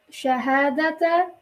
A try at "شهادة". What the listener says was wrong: Why did you make it light? شهادة.